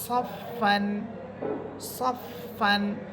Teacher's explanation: এরপরে শব্দ সদ, সদ এটা মোটা হরফ সদ ফা সবর সফ ফা দুই সবর ফান সফ ফান সফ ফান। ফা হরফ এটা বাতাস বের করে আপনাকে উচ্চারণ করতে হবে